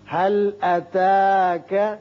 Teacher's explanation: یہاں لام پر قلقلہ نہ ہو